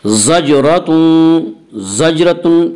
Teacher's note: ज़जरतुन जीम में क़लक़ला होगा, जीम हुरूफ क़लक़ला में से है।